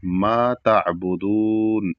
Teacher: ما کے بعد الف کو بھی کھینچنا ہے ہلکا سا، جلدی سے نہیں پڑھنا ہے